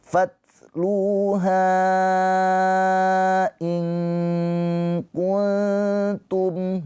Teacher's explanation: Mad jaiz munfasil. Ha dibaca panjang empat atau lima harakat.